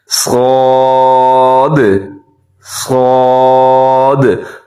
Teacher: صاد کے اندر ایک تو یہ صفت ہے کہ یہ موٹا پڑھا جاتا ہے، دوسری صفت یہ پائی جاتی ہے کہ اس کے اندر سیٹی کی آواز بھی آنی چاہیے۔ صاد، صاد، ہونٹ گول نہ ہو، یہ کوشش کیجیے گا۔